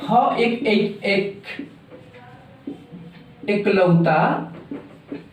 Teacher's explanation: ये ह एकलौता व्यंजन है। ह एक ऐसा एकलौता व्यंजन है जो सघोष और महाप्राण ये दोनों में आता है